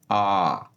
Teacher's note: वे स्वर जिनके उच्चारण में मुख सर्वाधिक खुलता है यानी कि सबसे ज्यादा खुलता है और ये होता है आ। आ में सबसे ज्यादा मुख खुलता है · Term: विवृत स्वर